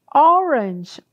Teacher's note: orange, ó, né? um o bem aberto. Então, som vocálico de O, ande, uma laranja.